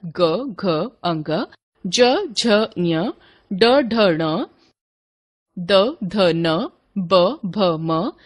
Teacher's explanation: जिन व्यंजन वर्णों के उच्चारण में स्वर तंत्रियों में कंपन होता है अर्थात नाद उत्पन्न होता है उनको घोष यानी सघोष व्यंजन कहते हैं। सभी वर्गों के तीसरे चौथे और पांचवें व्यंजन अर्थात ग अंग ज झ ड ढ ण द ध न ब भ म य र ल व ह तथा ण अण व्यंजन घोष होते हैं।